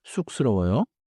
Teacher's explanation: The first syllable has the double consonant 쌍시옷, so it starts tight